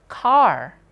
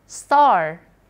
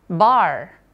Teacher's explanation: Kalau R-nya ada di akhir, R-nya juga dibaca rhotic, ya, samar-samar gitu